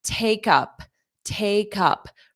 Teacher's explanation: I'm going to put that K sound on up and it will sound like cup.